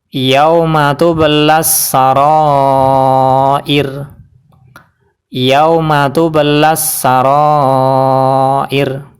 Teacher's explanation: Dan huruf sebelum ra adalah huruf yang berharokat kasroh, yaitu hamzah yang berwarna merah. Jadi ra-nya dibaca tarqiq atau tipis, yaitu cukup pakai lidah saja dan bibir tidak terangkat